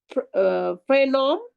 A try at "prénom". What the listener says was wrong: প্রেনো, নম না, প্রেনো, প্রেনো,